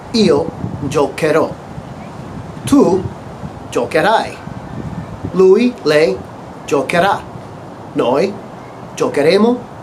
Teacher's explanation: In this case, for giocare, we need to maintain that hard C sound, k. We need to insert the H to maintain that hard sound.